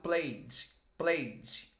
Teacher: esse ed a gente não pronuncia o e. A gente vai direto para o d e um d bem levinho.